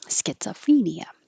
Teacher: it's not stressed so that o changes to uh